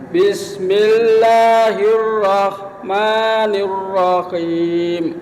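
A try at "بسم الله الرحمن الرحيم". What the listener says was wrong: Bismillahnya itu sekali lagi jangan bismillah, pakai i ya. Bismillah.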